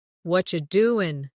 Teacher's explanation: Slowly it sounds very clear but quickly it becomes what you doing. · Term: blended speech